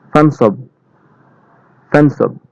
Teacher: তেমনি ভাবে এখানে দেখুন পা, এখানে কিন্তু আলিফ আছে, ফাঁকা আলিফ, এই আলিফ কিন্তু এখানে উচ্চারিত হবে না, কারণ এখানে যদি জের জবর পেশ কিছুই নাই, তো এই ফা কিন্তু নুনের সাথে গিয়ে ধরবে